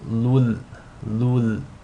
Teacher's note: So the rule is going to be idgham bila ghunna. You want to assimilate the tanween into the lam without any nasal sound. So it's as if the tanween is dropped and you're just saying lul, lul.